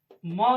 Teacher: म जो है ओठ से भी बोलते हैं और नासिका से भी बोलते हैं